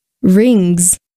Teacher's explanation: Notice the pronunciation of this plural ending is z, because the ending sound that precedes it, is voiced.